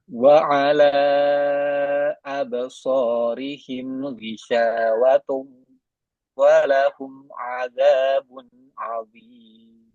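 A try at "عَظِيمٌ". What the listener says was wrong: Nah, satu lagi zoknya ya. Zoknya kurang tebal. Azim, zim, azim. Ujung lidah bertemu ujung gigi seri atas. Zo. Dikeluarkan sedikit ujung lidahnya sampai melewati gigi. Zo. Zo. Antum pastikan dulu keluar dari gigi sampai kegigit sedikit. Z. Z. Ujung lidahnya sudah keluar belum? Kalau Anda nggak lihat. Z. Z. Z.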